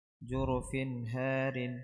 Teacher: فاء تنوين بالكسر مظهر قبل هاء مفتوحة